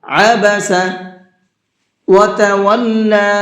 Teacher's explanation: آپ کو یہاں پر عین کا ساؤنڈ نکالنا ہے، حمزہ کا نہیں نکالنا، عبس نہیں پڑھنا ہے بلکہ عبس وتولی، اور لام کو تھوڑا سا کھینچ کر کے پڑھیں گے۔